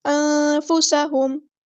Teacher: سین کی سیٹی ہم نے واضح کرنی ہے، انفسا نہیں، انفسہم، میم ساکن پہ یہاں پہ اظہار شفوی ہو رہا ہے، ٹائم نہیں دینا